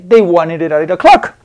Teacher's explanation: Porque tengo la vocal y la otra vocal ahí con la D en medio. Entonces la D, por estar en medio de las dos, se convierte en R.